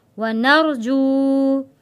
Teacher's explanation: جو کو ہم اس لیے کھینچ کر پڑھ رہے ہیں کہ واو ساکن ہے، اس سے پہلے پیش ہے، واو ساکن سے پہلے پیش ہو تو حروف مدہ کہلاتا ہے، جو ایک الف کے برابر کھینچ کر پڑھتے ہیں۔